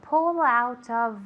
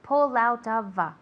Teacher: Consonante vocal, consonante vocal, consonante vocal, como si fuera una palabra. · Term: linking